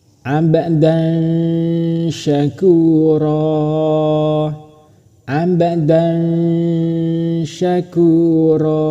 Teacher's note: cara membacanya tetap samar dan berdengung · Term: ikhfa